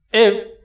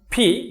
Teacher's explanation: এফটা আমরা উচ্চারণ করার ক্ষেত্রে নিচের ঠোঁটের সাথে উপরে দাঁতকে মিলিয়ে দিচ্ছি